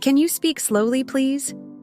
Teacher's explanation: Notice how my voice goes up at the end because it's a question.